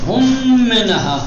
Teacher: میم ساکنہ کو حذف کر دیں گے اور بعد والے میم کو تشدید دے کر پڑھیں گے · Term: ادغام